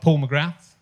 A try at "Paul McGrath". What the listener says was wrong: Paul McGrath. Yeah, we don't pronounce the TH.